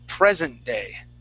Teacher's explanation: we're always going to uh focus on that first word okay and give the accent to that word so we say present day presenting okay so present day um